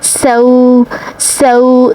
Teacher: واو لین کا قاعدہ ہوگا، اور لین والے حرف کو نرمی اور جلدی سے پڑھا جاتا ہے۔